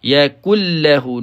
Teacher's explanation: nun bertemu dengan lam, kita hilangkan nun ini, pergi kepada lam terus. Yakul lahu, tidak ada unsur dengung, tidak ada unsur dengung dalam. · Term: idgham